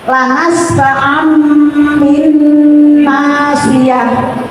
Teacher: non sukun atau tanwinnya diganti dengan mim. Dan cara bacanya jelas non sukun.